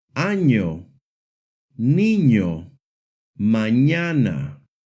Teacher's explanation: The letter N makes the NY sound, similar to the NY sound in the English word canyon.